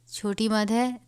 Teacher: چھوٹی مد ہے، 3 الف کے برابر کھینچ کر پڑھیں گے